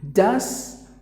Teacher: So the T is silent. That's the only change you gotta make.